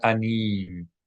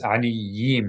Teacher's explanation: pronounce one of these yuds as a Y sound, as a consonant Y